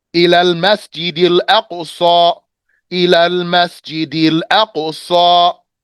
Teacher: Qaf does not let the air out.